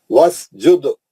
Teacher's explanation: سین پہ سیٹی ماریں گے، دال پہ خلخلہ کریں گے کبرا